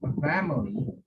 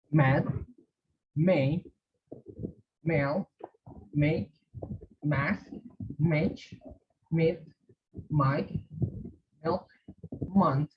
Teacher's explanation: close your lips use your voice and come through